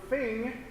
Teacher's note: I pretty much stick my tongue all the way out right I kind of bite my tongue